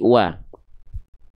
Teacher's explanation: Maka huruf waw di sini nggak kita baca waw lagi karena waw itu nama asli. Maka waw-nya dibaca cukup dengan bunyi vokal A saja.